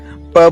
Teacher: प बोलते हैं तो हमें होठों को हवा वहां पे रोक के और फिर अचानक छोड़ते हैं तो प का उच्चारण होता है।